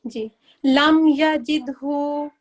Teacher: इसमें हम रुकेंगे नहीं और हमें नाक से आवाज नहीं आएगी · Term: बगैर गुना